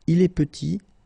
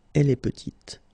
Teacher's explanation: Final T is not pronounced, and then when you add this E at the end, you get the sound T